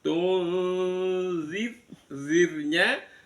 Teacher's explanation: Kemudian yang tung itu ada nun sukun bertemu dengan zal, diikhfakan, disamarkan bunyi nunnya di tengah-tengah antara nun sama zal. Tunzir, zirnya ro sukun, sebelumnya ada zal di kasroh, itu roknya dibaca tipis sambil drenges ya.